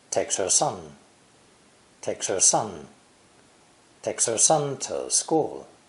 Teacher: the pronoun her drops the h sound in normal conversation this allows for easy linking with the previous word in this